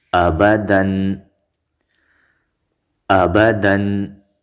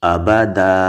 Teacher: ګورئ دو زبر په الف باندې بدل شو، ولاړ زبر شو